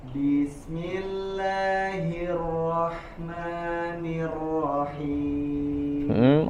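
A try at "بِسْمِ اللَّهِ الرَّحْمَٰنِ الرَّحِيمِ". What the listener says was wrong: Ro-nya getaran tidak terlalu banyak di huruf ro-nya bertasydid. Wa akhfi takriran idza tushaddadu, disamarkan huruf ro-nya. Bismillahirrahmanirrahim.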